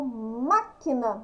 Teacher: Então, quando eu falo máquina, acento agudo no má. Acento agudo aqui no má, ó, o som mais forte.